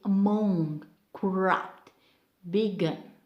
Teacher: So most of the time we mark stress pattern on the second syllable for verbs of two syllables and the preposition